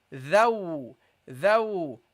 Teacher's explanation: The dhal, you pronounce it by putting your tongue slightly between your teeth.